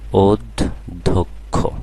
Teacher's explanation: প্রথমে অ আছে এরপরে জ ফল আছে সুতরাং অ এর উচ্চারণ আর অ থাকবে না ও এর মত হয়ে যাবে অধ্যক্ষ হ্যাঁ তাহলে এখানে অ এর উচ্চারণ ও হয়ে গেল অধ্যক্ষ